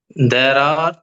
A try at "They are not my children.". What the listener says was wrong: தேர்னு படிக்க கூடாது. தே.